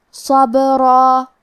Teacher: کلمت صبرہ میں حرف الصاد حروف تفخیم میں سے ہے، لہذا ہم حرف الصاد کو بھاری آواز میں پڑھیں گے. با پہ جزم ہے، لہذا ہم حرف البا کو ہلاتے ہوئے یہ کلمہ کو پڑھیں گے کیونکہ یہاں با کا حکم ہے قلقلہ.